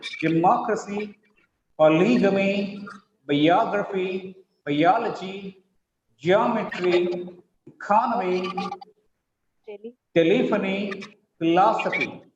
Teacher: The syllable preceding the ending gets stress here.